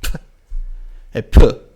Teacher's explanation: heavy breath follows after the p. After the p there is a heavy breath.